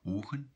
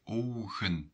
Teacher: the Dutch people would add a W or sometimes a G. For example, it starts with ogen in Belgium, ogen, the eyes, but in the Netherlands they would say ogen, something more with the W, ogen.